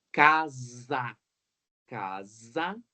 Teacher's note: Casa escreve com S, mas tem som de Z.